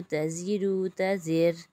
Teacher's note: را سے پہلے زیر ہے تو یہاں پر را باریک ہو جائے گا